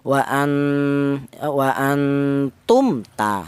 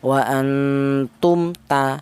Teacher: yang benar mem matinya dibaca idhar atau dibaca jelas. Wa antum ta, nah, gitu. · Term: idhar syafawi